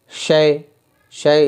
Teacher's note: یا ساکن سے پہلے زبر آ رہا ہے، یا لین ہے، تختی نمبر 5 میں ہم نے پڑھا ہے تو اسے نہیں کھینچیں گے